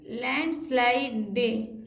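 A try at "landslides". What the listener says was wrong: स्लाइड्स, ये तो जोड़ना ही है, यानी कि अ जोड़ दिया वहाँ, लैंड स्लाइडेस तो नहीं बोल रहे हैं, क्योंकि ई जब भी लास्ट में रहता है वो अ ही होता है।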